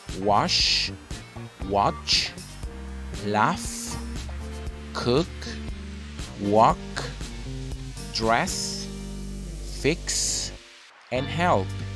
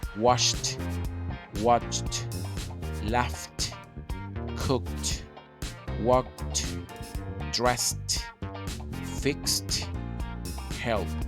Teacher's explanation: laugh cooked worked dressed fixed help so due to the fact the final sound of these verbs does not have vibration or is voiceless so we will place T in the pronunciation at the end